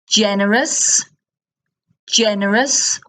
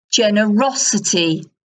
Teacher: So the word stress shifts. Generous, generous on the first E, ungenerous, but it's generosity on the O, generosity.